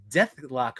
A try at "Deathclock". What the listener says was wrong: Deathclock. You missed a K in there.